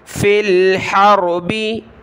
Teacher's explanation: را کلرفل ہے موٹا پڑھیں گے، حا کو گلے سے نکالیں